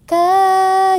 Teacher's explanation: Nah, ciri-ciri mad tabi'i itu ketika huruf hijaiyahnya bertemu dengan hamzah atau alif, kemudian kasrah bertemu dengan ya mati, kemudian dhammah bertemu dengan waw sukun. Nah, itu harus dipanjangkan 1 alif atau 2 harokat, 2 ketukan.